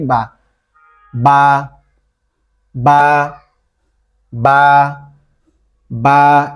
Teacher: দুই ঠোঁট একবারে বন্ধ করে খুললে উচ্চারণ হবে